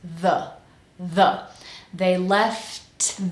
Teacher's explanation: we have our tongue between our teeth again voiced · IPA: ð